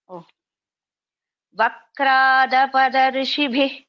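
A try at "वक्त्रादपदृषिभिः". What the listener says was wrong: ஆபத த்ரிஷிபிஹ். அந்த தா இத சொல்ல மாட்டேங்க. இந்த தாவ சொல்ல மாட்டேங்கிறீர்கள். ஆபத த்ரிஷி த்ரு சொல்லல, ருன்னு சொல்றேலங்க. த்ரு இருக்குங்க. அபதது ரிஷிபிஹி அபத த்ரிஷிபி.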